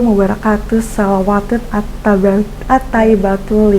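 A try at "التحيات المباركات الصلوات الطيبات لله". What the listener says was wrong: Enggak pakai at-taibat. At-tahiyatul mubarakatus salawatut tayyibatu langsung nyambung dia.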